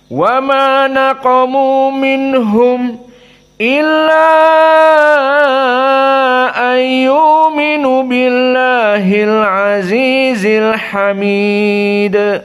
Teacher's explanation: qaah Hamzah di sini dalam permasalahan maadjaiz munfasil al-isba al-isba dikenyangkan maka di sini dibaca dalam keadaan al-isba dan minhumnya dalam keadaan asakt maknanya Sukut sebentar · sukun mimnya disakat karena bertemu dengan Hamzah · dibaca dalam keadaan al-isba dan minhumnya dalam keadaan as-sakt. Maknanya sukut sebentar. Maka kita baca qiraah hamzah, wa ma naqamu minhum illa ayyuminu billahil azizil hamid.